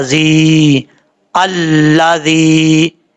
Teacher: یہ زال جو ہے بغیر سیٹی کے ساتھ پڑھا جائے گا، زال کے بعد جا مدہ ہے، ایک الف کی مقدار لمبا کر کے پڑھا جائے گا۔